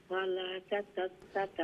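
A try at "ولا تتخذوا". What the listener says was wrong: ওয়ালা লাম আলিফ এক আলিফ লম্বা হইব। ওয়ালা ওয়ালা তাত্তাখিযু ওয়ালা তাত্তাখিযু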